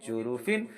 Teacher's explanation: جو تنوین سے دو زیر سے جو نون کی آواز آ رہی ہے اس نون کی آواز کو ظاہر کریں گے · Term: اظہار